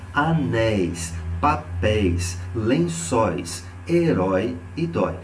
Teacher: a última sílaba é tônica e há a presença do ditongo aberto